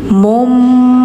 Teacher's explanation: Jadi mengganti suara N ke M gitu. Jadi mumbatsa tsa lidahnya kayak digigit tsa tsa gitu. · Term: Iqlab